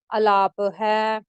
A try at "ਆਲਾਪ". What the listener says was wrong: ਨੂੰ ਵੀ ਅੜੇ ਨਾਲ ਕੰਨਾ ਵੀ ਹੈ ਜੀ ਆਲਾਪ ਹੈ।